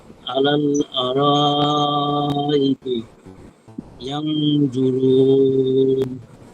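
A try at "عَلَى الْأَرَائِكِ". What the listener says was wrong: শেষেরটা মনে হয় ঠিক আছে, প্রথমটা আরেকটু দরকার। আরা না, আর আর কি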